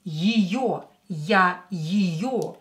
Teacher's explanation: е, not stressed, pronounce it as и.